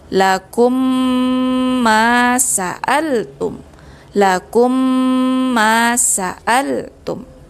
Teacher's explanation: mim mati bertemu dengan mim berharakat, dia masuk ke dalam idgham mimi berdengung dengan kadar 2 harakat